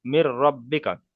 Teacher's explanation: নুন সাকিনকে র এর সাথে মিলিয়ে বিনা গণ্যায় পড়তে হবে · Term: ঈদগামে তাম